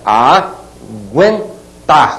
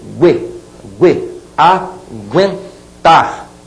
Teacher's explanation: aquele u tá sendo pronunciado de maneira muito rápida né ó gu gu falou assim você tem o trema P